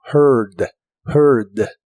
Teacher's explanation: el principio de esta palabra se pronuncia como her pero con tu lengua lo más atrás que puedas y debe sonar como heard heard el verbo vivir en el